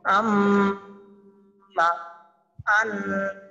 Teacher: 17 নম্বর মাখরাজ নাকের বাঁশি হইতে গুন্না উচ্চারিত হয়